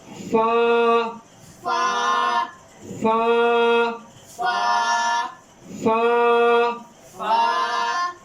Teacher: اس کا مخرج ہے اوپر کے دانت کے کنارے نچلے ہونٹ کے تری والے حصے سے۔